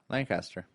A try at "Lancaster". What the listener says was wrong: Lancaster. Lancaster. There's no E at the end of land.